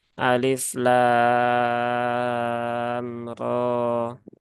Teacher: ini dibaca panjang enam harakat dan dia dibaca secara mukhaffaf ya Secara mukhaofaf ya Secara ringan ya Secara ringan nah kesalahannya seringki